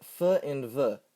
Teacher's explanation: Next over are the labiodental consonants. These sounds are made by the upper teeth and lower lip